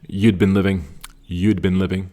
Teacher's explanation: You hear a slight d sound and then you kind of punch the bin.